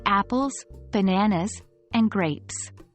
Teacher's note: The Voice Rises slightly on bananas to indicate the list hasn't ended yet and falls on grapes to conclude the list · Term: fall intonation, Rise/fall intonation